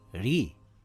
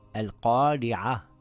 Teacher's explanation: If the Ra has a kasra, it will read light. It is just like when you smile, ri. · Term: light Ra